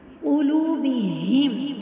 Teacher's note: قاف کو موٹا پڑھیں گے۔